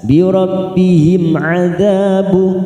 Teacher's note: dza fathah diikuti alif 2 harokat